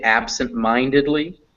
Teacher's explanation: ab takes the second stress so you can kind of hear when i say it absent-mindedly that ab also is stressed but it's not as stressed as mine